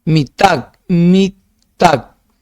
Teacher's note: Sílaba tónica en tac.